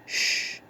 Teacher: placing the tongue against the area just behind the alveolar Ridge producing sounds like Shh and get the other place of articulation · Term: post alveolar